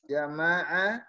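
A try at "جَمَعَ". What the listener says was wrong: Pendek.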